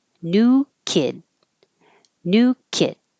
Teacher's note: you won't hear the final D or the T your tongue will go to that position and then just hold the airf flow and um somebody asked